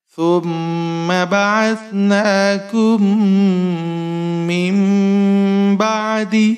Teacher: گے کیونکہ نون ساکن کے بعد ہمارے پاس با ہے، تو اب ہم نون ساکن کو جو ہے وہ میم میں بدلیں گے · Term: اقلاب